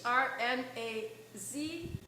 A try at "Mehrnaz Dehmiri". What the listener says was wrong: So it's Mehrnaz Dehmiri. The Z is pronounced actually. Yes. Yeah, it's yeah, I know it can be like people read it, it's just as it's you read it the same way it's written.